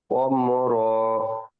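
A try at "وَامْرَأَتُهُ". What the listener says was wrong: অম র টান হয়ে যাচ্ছে।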